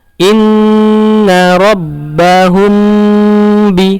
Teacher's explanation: Nah, di sini rabbahum, hum di sini mim ketemu ba, maka dia ikhfa syafawi, maka ditahan juga.